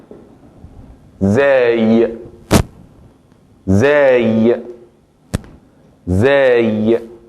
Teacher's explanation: como la Z inglesa. Z, pero sin poner el punto de la lengua dentro o entre los dientes superiores e inferiores. Porque si pongo el punto de la lengua dentro, entonces sería z. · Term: la letra Zay